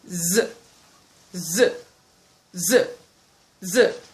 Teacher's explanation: Then we have z, z, z, z. When producing the z sound, the tip of the tongue goes slightly, okay, to the alveolar ridge. Then it moves backwards a bit.